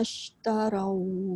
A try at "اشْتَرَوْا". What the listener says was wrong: Jaga jangan tarau. Taro. Ro tu pastikan mesti bunyi dia ro baris atas bunyinya ro, jangan jadi ra.